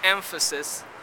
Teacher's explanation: the assimilation of the bilabial nasal to a following labiodental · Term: assimilation of nasals